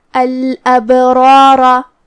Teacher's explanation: مد الف اپنے پیچھے والے حرف کا حکم لیتا ہے تفخیم میں اور ترقیق میں، تو جو کہ اس سے پہلے را ہے اور را کا حکم ہے تفخیم، تو ہم را کو اور مد الف کو اور آخری والے را کو بھی بھاری آواز میں ادا کریں گے · پھر حرف البا ہے اور اس پہ جزم ہے. یہاں با کا حکم ہے قلقلہ. قلقلہ کا معنی ہے حرف ساکن کو ہلانا، تو ہم با کو ہلاتے ہوئے یہ کلمہ کو ادا کریں گے.